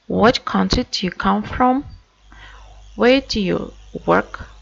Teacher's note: falling intonation we use in WH question, like what country do you come from?